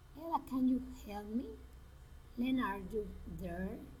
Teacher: Direct address, rising intonation